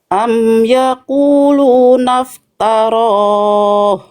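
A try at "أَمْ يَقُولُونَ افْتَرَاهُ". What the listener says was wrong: Oke, kayaknya itu logat ya. Coba jangan to, tapi ta. semua huruf vokal A di sini masih bunyinya gini. Am yaquluna. Nah, jangan ya. Tapi am yaquluna iftara.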